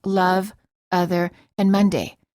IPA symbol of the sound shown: ə